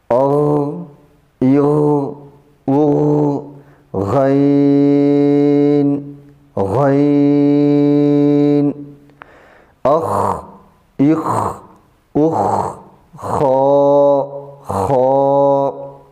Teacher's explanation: ادنا حلق کا وہ حصہ جو منہ کی طرف ہے، اس سے غین، خا ادا ہوتے ہیں۔ · حرف غین اور خا میں تفخیم پائی جاتی ہے، یعنی ان کو موٹا کر کے پڑھیں گے، اور ایک احتیاط یہ کریں گے کہ ان دونوں کے ادائیگی کے وقت ہونٹوں کو گول بھی نہیں کریں گے اور باریک بھی نہیں پڑھیں گے۔